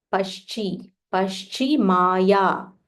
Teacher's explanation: This is half sh, talavya sh, followed by full ch.